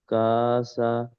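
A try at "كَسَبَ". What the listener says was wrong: কা, কাটাকে টানবো না, কাফ জবর কা, সিন জবর সা, কাসা। তারপরে তিনটে অ্যাডজাস্ট। মাশাল্লাহ, কাসাবা।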